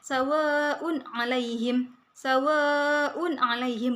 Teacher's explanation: Sawaun alaihim itu dibaca jelas karena ini bacaan ithar, tanwin bertemu dengan ain.